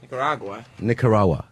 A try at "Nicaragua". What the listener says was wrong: Gua. There's a G. Nicaragua. Pronounce the letters. Nicaragua.